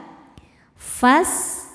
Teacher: Sinnya berdesis seperti suara ular karena punya sifat namanya sofir